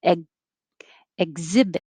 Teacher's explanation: i'm putting my tongue up in the back for the g position to stop the airflow